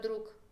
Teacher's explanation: la última consonante en la palabra siempre se lee sorda o sea sin el uso de las cuerdas vocales apagamos la voz en la última consonante esto tiene que ver